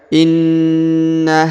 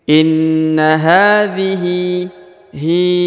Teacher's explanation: huruf ha dibaca panjang dua harakat karena di atasnya terdapat Alif kecil